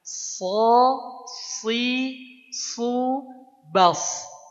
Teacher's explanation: yang shad, dia tebal. tebalkan, pangkal lidahnya diangkat